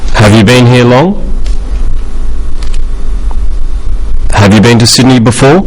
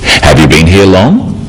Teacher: Questions that start with have you are yes-no questions, so they have a rising tone.